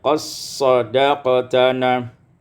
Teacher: idghamud dal fi shad, diidghamkan dal pada shad menjadi qassadaqtana.